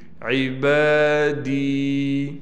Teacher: با پر کڑا زبر ہونے کی وجہ سے با کو ایک الف کی مقدار کھینچیں گے